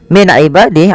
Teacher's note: nun sukun bertemu dengan ain, yaitu dibaca dengan jelas suara nunnya karena dia ada bacaan izhar halqi.